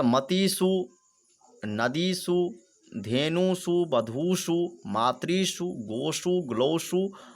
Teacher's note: इन प्रत्याहार के बाद होने के कारण इन सब में जो है दंत सकार के स्थान पे मूर्धन्य सकार हुआ है